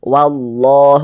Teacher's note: Ini loh, huruf lam yang di tengahnya ini, huruf lam jalalah namanya. Nah, huruf lam jalalahnya ini dibaca tebal, nah lafaz Allahnya dibaca tebal